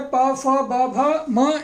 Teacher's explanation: तो ये जो है पा, फा, बा, भा, मा, ये ओष्ठ से बोले जाते हैं।